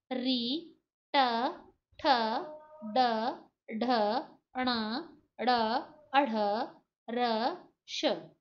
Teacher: आप देखेंगे कि आपकी जिह्वा का जो अग्र भाग है वो दांतों के पीछे ऊपर कठोर मूर्धन्य जगह से टकरा रहा है, इस मूर्धा से टकरा रहा है, इसलिए उसे मूर्धन्य व्यंजन बोलेंगे।